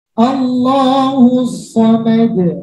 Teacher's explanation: Kalau ayat kedua pada qalqalah kubra saya berhenti, Allahus samad, maka keluar pantulannya. Tapi kalau saya lanjutkan wasol, maka hilang qalqalahnya.